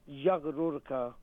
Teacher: ra is again a full mouth letter because it's got a dhamma on top of it.